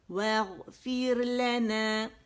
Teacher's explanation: اس کو موٹا نہیں کریں گے کیونکہ را ساکن سے پہلے زیر آ رہی ہے · واو باریک غائن موٹا ادن الحلق سے نکلے گا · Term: باریک ہوگی را